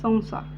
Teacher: त्या अनुस्वाराच्या उच्चारामध्ये व युक्त उच्चार होणार आहे